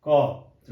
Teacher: Starting में क का उच्चारण होता है और लास्ट में आते आते अ लग जाता है। क लास्ट में लगता है अ का उच्चारण हो रहा है, तो यानी क का उच्चारण करने के लिए स्वर का हेल्प लेना पड़ता है, या व्यंजन का उच्चारण करने स्वर का हेल्प लेना पड़ता है।